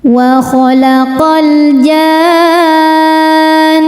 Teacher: Maka cara bacanya huruf jim wajib dibaca panjang enam harakat. Kemudian ee masukkan ke nun sambil didengungkan, ditahan ya. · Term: mad lazim kilmi mutsaqqal